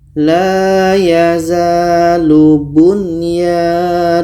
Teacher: dua-duanya dibaca jelas dan tidak boleh dengung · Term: izhar wajib